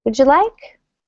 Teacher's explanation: You may not even hear the W.